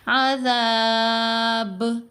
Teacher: با کو ساکن پڑھیں گے تو با پر قلقلہ کریں گے. تو یہ جو قلقلہ ہوگا، چونکہ قلقلہ کا لیٹر لفظ کے آخر میں آ رہا ہے تو یہ قلقلہ کبرا، 2 درجے کا قلقلہ.